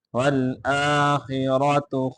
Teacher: آخرة خارا دونوں کو موٹا کر کے پڑھیں گے والآخرة خیر را کو آگے واو کے ساتھ ملائیں خیر وابقا